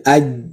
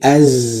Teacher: Nah, itu sofir, ada desisnya, mengalir, ya.